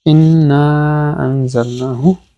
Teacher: মধ্যে মুনফাসিল, মদের হরফের পরে হামজা আসছে পরের শব্দে , ইন্না আনজালনাহু, ইন্না প্রথমে ওয়াজিব গুন্না, পরে আনজালনাহু, নাহু নুনের